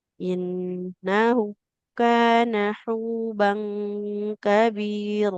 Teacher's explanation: Huruf nun berharakat fathah di depannya tidak ada alif maka tidak boleh dibaca panjang.